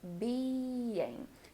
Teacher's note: the word being has two syllables being so be sure that you're making these vowels long and really well pronounced